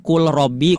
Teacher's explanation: Nah, idgam mutaqoq mutaqorbain. Nah, ini yang tadinya lam sukun itu kan dibacanya izhar, cuman di lafaz ini menjadi idgam